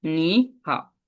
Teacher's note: দুইটা শব্দে কি একসাথে দুইটা কি থার্ড টোন আছে, থার্ড টোন থাকলে আমরা প্রথম টোনটাকে আমরা সেকেন্ড টোন ইউজ করবো